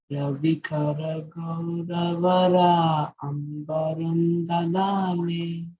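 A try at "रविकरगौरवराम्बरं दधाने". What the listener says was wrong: Ravikara Gauravaram. See, Vara, Ambaram, you have to combine. Ravikara Gauravaram Bharam Dadhane.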